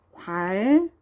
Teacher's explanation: 리을로 바뀌잖아요. 니은과 리을이 만나면 니은이 리을로 바뀌는 거 유음하죠. 유음화 일어났어요.